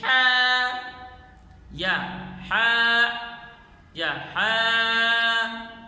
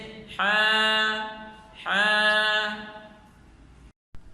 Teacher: صحیح اس کی ادا یہ ہے کہ ہا کو وسط حلق سے نرمی سے ادا کر کے پڑھیں گے کہ آخر میں حمزہ ہا کی آواز بھی نہ آئے اور ایک الف سے زائد لمبا بھی نہ کیا جائے، جیسے ہا ہا۔